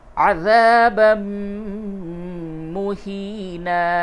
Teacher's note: تنوین کے بعد میم آیا تو ادغام مع الغنہ ہوگا، تشدید لکھا ہوا ہے، اور اس جگہ پہ تشدید نہیں ہے لیکن پھر بھی آپ کو ادغام کرنا ہے.